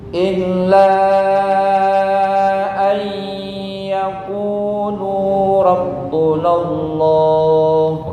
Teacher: Kurang lama. Illa an yaqulu Lu panjang satu alif.